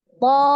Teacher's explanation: Panjangnya 6 harokat. Cara membacanya dinabar di tasdidnya. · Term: mad lazim